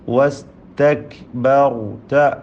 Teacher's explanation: കാഫ് മഹ്മൂസായ ഹംസ് നൽകി ഉച്ചരിക്കേണ്ട അക്ഷരമാണ്